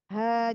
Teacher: ha didorong dari pangkal tenggorokan